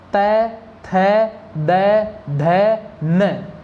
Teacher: तो तय वर्ग बोलते समय आपकी जीभ है दांतों के लगेगी।